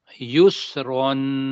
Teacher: آگے سین کی سیٹی بجنی ہے